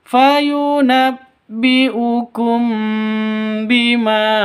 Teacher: Jadi ikhfa safawi itu ada 1 hurufnya, hanya ba, mim mati bertemu dengan ba, dengung, samar didengungkan